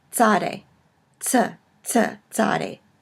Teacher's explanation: combines two consonants in English kind of a TS sound as in cats